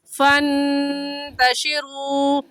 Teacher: नून साकिन पर गुन्ना करेंगे। और गुन्ना एक अलिफ की मिकदार नाक में आवाज़ छुपाने को गुन्ना कहते हैं।